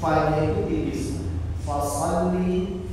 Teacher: Tapi huruf fa ini adalah huruf tipis. Jadi karena huruf shadnya ini tebal, jangan kita fa-nya dibaca tebal